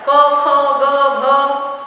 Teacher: पहला क वर्ग, उसमें कंठव्य कहा जाता है उसको। कंठ मतलब जिह्वा कंठ से लगकर उच्चारण हो रहा है। क ख ग घ, हवा का दाब भी वहीं से निकल रहा है।